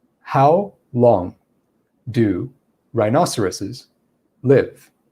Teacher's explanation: speed it would sound like this how long do rhinoceroses live i still said the word rhinoceros pretty quickly but i was using a lot of pauses in between each word and that's what we mean by cadence and we can vary